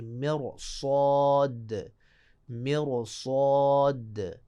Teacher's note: اب دیکھیں مر پہلے ہم سمجھانے کے لیے سادہ پڑھتے ہیں، مر را ساکن ہے، اس سے پہلے کسرہ لازمی مر، فوراً بعد حروف مستعلیہ میں سے آ گیا تو پھر اس کو موٹا پڑھیں گے